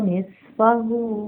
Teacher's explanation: नून साकिन के बाद फा आ रहा है, नून साकिन की आवाज़ को नाक में छुपा लेंगे। फा को नरमी से अदा करेंगे। · स्वाद एक हेवी लेटर है और विस्लिंग साउंड आएगी इसकी।